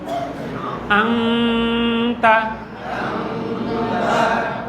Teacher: আপনি মুখটা বন্ধ করে সাউন্ডটা নাক দিয়ে আনবেন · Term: গুণনা